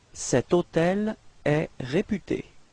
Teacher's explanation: Keep in mind that even if hôtel is starting with H, H is actually not pronounced, so the first sound of the word is O